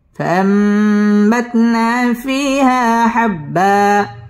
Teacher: এই নুনটাকে মিম দ্বারা পরিবর্তন করে গুন্নাহ করে পড়তে হবে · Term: ইকলাব